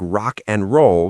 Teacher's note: it's so frustrating when I know the word and, but I only hear a tiny N sound